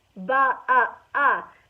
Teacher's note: that a is making the short u sound and that's a schwa